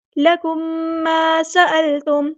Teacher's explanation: میم ساکن کے بعد میم آ گیا تو یہاں پہ ادغام ہو رہا ہے ، ادغام شفوی، لکم ما سألتم، سین کی سیٹی ہم نے